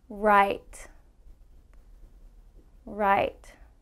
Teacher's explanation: my tongue is not touching and it's actually curved up a little bit but i still pull back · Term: r sound